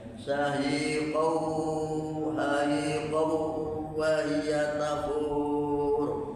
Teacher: Tanwin ketemu wawu disebut idgham bihuna. Idgham itu masuk, bihuna dengan dengung.